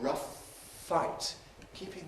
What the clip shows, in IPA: ˈrʌf ˈfaɪt